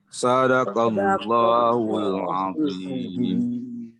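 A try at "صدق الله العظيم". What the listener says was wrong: Tebalkan sikit lagi. Azim. Kena tebalkan. Azim.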